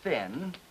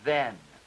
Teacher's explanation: The voiceless spirant interdental and the voiced one